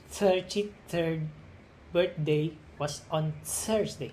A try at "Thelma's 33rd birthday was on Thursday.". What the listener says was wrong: Aha, okay.